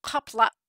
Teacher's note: The glottal stop in Klingon is also written with the apostrophe, like at the end of the word kapla. It doesn't just end in an ah, it ends in an ah that abruptly cuts off with that glottal stop.